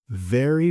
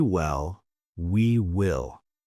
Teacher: My bottom lip touches my teeth for V, but not for W.